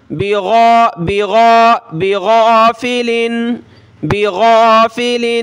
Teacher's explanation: اس کی غین نکالنی ہے اس کی جگہ آپ نے گاف نہیں پڑھنا